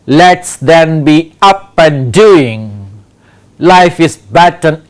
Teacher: The rhythm is trochee, that means we have a strong and weak syllable pattern in this poem.